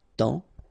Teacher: in that case, it's only the nasal here that you will hear, temps, okay, because the P is not pronounced and the S is not pronounced.